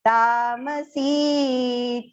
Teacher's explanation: Ta is long, ma is short, and si has to go long.